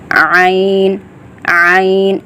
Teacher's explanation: یہ عین اور ہا گلے کے درمیانی حصے سے ادا کیا جاتا ہے۔ عین کو آپ نے ٹھیک پڑھنا ہے، اس طرح پڑھیں جیسے کسی چیز کو نچوڑا جا رہا ہو۔ · عین کو آپ نے ٹھیک پڑھنا ہے، اس طرح پڑھیں جیسے کسی چیز کو نچوڑا جا رہا ہو۔ عین عین، آپ کے گلے پہ درمیانی حصے پہ زور لگتا ہے، پھر عین ادا ہوتا ہے، آسانی سے نہیں ہوتا۔